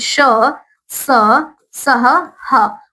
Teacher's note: उष्म व्यंजन क्या होते हैं? उसे कहते हैं जिसके उच्चारण में मुख के अंदर गर्म सांस बाहर निकलती है। गर्म सांस बाहर निकलती है उसे हम कहते हैं उष्म व्यंजन।